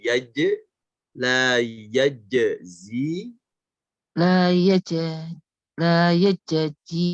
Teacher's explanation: jadi cara bacanya adalah suaranya memantul ke j dulu